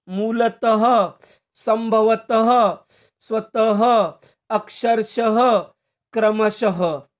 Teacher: विसर्ग के शब्दों का उच्चारण करते समय आधे ह का उच्चार होता है